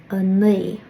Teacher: you can't make the W sound because you can't move your lips, but you're trying to.